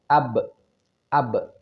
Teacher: mengucapkan huruf ba dengan posisi yang sukun AB maka si e bibir ini segera dilepaskan atau dibuka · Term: Qalqalah